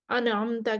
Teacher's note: آئین کو مخرج سے نکالتے ہوئے نون کو متحرک کر دیا